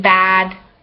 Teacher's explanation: near open front unrounded like in bad